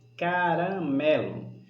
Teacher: paroxítona porque a sílaba tônica é a penúltima